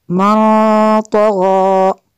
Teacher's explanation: اخفا ہوگا، نون ساکن کے بعد طغى حروف اخفا میں سے ہے